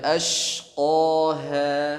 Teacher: ada huruf shin tahan, ada sifat tafasyi di situ. Nah, shin juga tipis sifatnya. · qaf ditebalkan, ha ditipiskan.